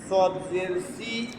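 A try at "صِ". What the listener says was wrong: সুই, মোটা হবে।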